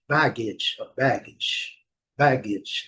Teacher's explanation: Uma outra coisa também muito comum nesse tipo de palavra terminada com a em inglês, sempre a primeira sílaba vai ser a mais forte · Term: sílaba mais forte